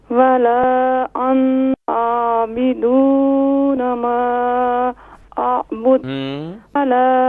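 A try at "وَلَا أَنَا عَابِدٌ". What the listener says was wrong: انا نون کو نہیں کھینچیں گے، ولا انا عابد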